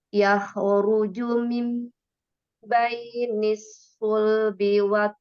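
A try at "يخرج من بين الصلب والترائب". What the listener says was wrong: kebaca tebal coba ditipisin lagi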